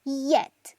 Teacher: Recuerde que esa jotita del símbolo fonético no es una jotita, sino que es una I que se hace desde la garganta, I con vibración